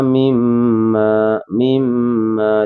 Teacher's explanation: Kalau kita kenal kalau ada mim bertasyidan hunnah musyaddadah. Dibacanya mendengung dua ketukan